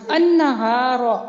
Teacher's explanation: لام ساکن اپنے حروف شمسی میں مدغم ہو گیا, مل گیا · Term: ادغام شمسی